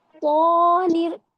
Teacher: طانر موٹا کرو، پیچھے سے زبان اندر ڈالو حلق کے